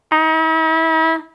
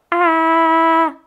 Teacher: So example, for our letter A, we can go ah, and I can hold out the sound, as well as there's nothing blocking the sound. So I can actually stick my finger right here and go ah, and I can hold out the sound.